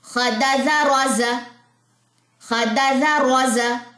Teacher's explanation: इसमें रॉ मोटा है, जा में सीटी है, ठीक है। खदाजा रोजा, इसको कभी भी आपने सीटी नहीं डालनी, इस वाले जाल में सीटी इसमें है, जा में।